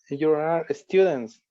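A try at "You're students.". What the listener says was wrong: Ajá, pero contraído, como lo que hiciste ahorita.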